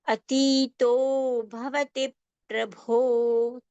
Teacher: Bha at both the words, last two words in the first pankti are Mahapran sounds, more breath and more strength